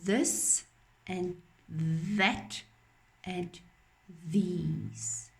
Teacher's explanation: My tongue sticks out a little bit for this and that and these. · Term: th sound